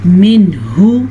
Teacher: ज़ाहिर करके पढ़ेंगे, बग़ैर गुन्ने के पढ़ेंगे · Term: इजहार